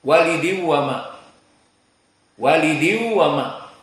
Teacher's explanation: Dari tanwin nun kepada waw dibaca dengan waw, walidiu itu dinamakan idgham saja. Lalu bi gunnah maknanya di saat dibaca diu itu makhrajnya pindah kepada khayshum yakni hidung. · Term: idgham bi gunnah